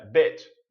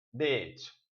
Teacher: Então, assim, é mais longo e eu falo o som do I mesmo